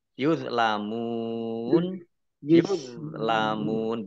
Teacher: Lam fathah alif mat tabi'i yuzlamun yuzlamun dha sukun bukan kolkolah jangan dipantulkan. Mim sukun mim domah wawu sukun mat tabi'i tetapi karena bertemu dengan huruf terakhir yang dibaca sukun karena wakof maka menjadi mat arif lis sukun.